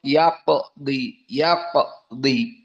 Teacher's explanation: yaqdi qaf dalam keadaan sukun, qalqalah as-sughra